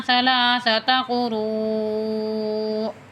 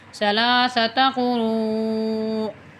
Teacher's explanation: 3 کھڑے زبر کے برابر جو ہے یہ مد پڑھی جائے گی کھینچ کے، آگے حمزہ ہے تو وقف کریں گے یہاں پہ 3 قروء۔